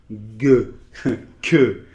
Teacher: ces sons [g] ou [k], ils sont formés au fond de la bouche, en fait la langue est vers l'arrière, et après on avance la langue, [g], [k], d'accord ?